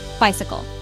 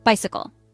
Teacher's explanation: 3 syllables. Stress on first syllable. Bicycle. Meaning, a vehicle with 2 wheels, you ride it by pedaling.